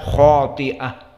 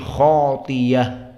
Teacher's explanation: Hamzah di sini diganti dengan ya yang maftuh. Maka qiraah Hamzah tidak membaca khati'ah, tetapi khatiyah. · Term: ibdalul hamzah